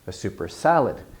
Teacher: a noun so kind of a normal noun phrase adjective noun of course the adjective has stress but the noun has more stress than the adjective